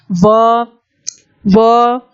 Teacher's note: इसी प्रकार पूछा है अगला, वकारस्य दंतोष्ठम, वकार एकमात्र ऐसा वर्ण है जिसका उच्चारण दांत और ओष्ठ दोनों को मिला के किया जाता है। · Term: दंत ओष्ठ